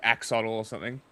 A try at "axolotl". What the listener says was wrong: There's no L. The L. The L ending in the Aztec language is like a click sound. That's why it's like atl.